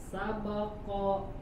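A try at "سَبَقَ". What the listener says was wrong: Tebal lagi qafnya. Sabaqo.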